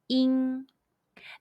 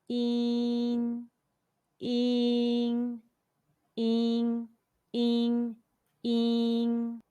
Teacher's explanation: When you see the English letter IN in Pinyin, the pronunciation is YIN. It's like the EEN sound in the English word teen, but shorter and with more spread lips. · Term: the final YIN